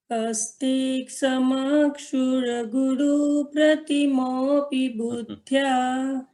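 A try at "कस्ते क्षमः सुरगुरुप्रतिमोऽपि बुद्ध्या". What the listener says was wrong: आपके स में श का उच्चारण है, इसे सुधारना होगा।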